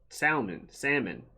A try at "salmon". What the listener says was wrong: The L is silent, bro. The L is silent. Salmon.